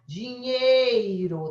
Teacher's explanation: O E vogal, porque tem som de E, e o I sendo semivogal.